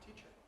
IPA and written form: ˈtiʧɚ (teacher)